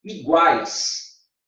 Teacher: Em iguais aí, ó, você tem um tritongo. Tritongo. Esse tritongo é oral, olha lá. Tritongo oral.